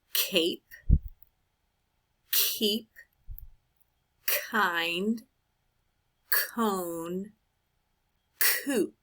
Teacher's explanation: the back of the tongue can lift up so that it touches the top of the mouth